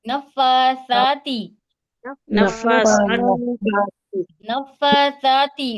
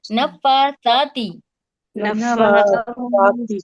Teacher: جب زبان کی نوک کو آپ سامنے کے دو دانتوں کے کناروں سے ٹچ کر کے سا ادا کریں گے تو سرسراہٹ نہیں ہوگی